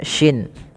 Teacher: Kemudian pelafal al-masyriqu, shinnya usahakan dia jangan dibaca dengan al-masriku, jangan terganti dengan huruf sin ya teman-teman, tapi dia huruf shin, yaitu makhrajnya dari tengah lidah kita, huruf shin ya, dia ada y-nya gitu ya, shin. Al-masyriqu wal maghrib.